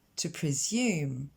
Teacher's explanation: l'accent tonique tombe sur la deuxième syllabe